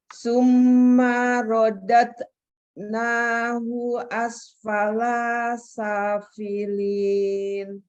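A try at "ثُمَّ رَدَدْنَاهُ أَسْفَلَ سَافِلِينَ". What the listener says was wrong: Lanya nggak panjang. Asfala safilin. Panjangnya di sa.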